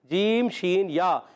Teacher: जीम शीन या वस्ते ज़बान वस्ते तालु से अदा होते हैं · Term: उर्फ़े शजरिया